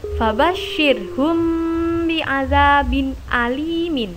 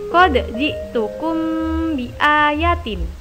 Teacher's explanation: ikhfa syafawi adalah setiap mim sukun bertemu ba, sehingga bacaannya berkumpul di 2 bibir. Cara membacanya memasukkan ke dalam huruf setelahnya seperti berharokat tasydid.